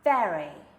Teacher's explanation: I'm actually biting my bottom lip with my top teeth in a very subtle manner